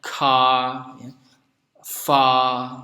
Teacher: Kemudian juga di aksen British dan American English itu berbeda pada pengucapan akhir kata yang berakhiran dengan bunyi R, ya. Kalau di British biasanya bunyi R-nya tidak dilafalkan.